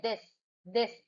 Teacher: सो of course दिस is द voice dental fricative. देखो, voice है, vocal cords vibrate करती हैं.